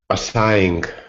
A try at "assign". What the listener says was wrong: the g is silent in this one it's a strange one